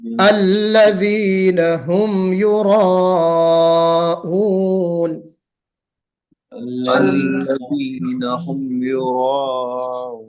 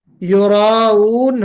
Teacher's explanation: रा को मोटा और मद फिर हमजा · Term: रा मोटा